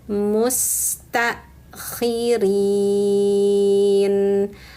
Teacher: Nah, di sini tanya-nya dihentak karena ada hamzah sukun maka bunyinya mustakkhirin. Hamzah sukun itu bunyinya tertahan di belakang makhrajnya. Jadi ada bunyi tertahan dari tenggorokan bawah.